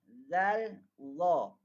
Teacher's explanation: zal, za adalah dua huruf yang berkongsi makhraj. Zal, za, iaitu makhraj hujung lidah.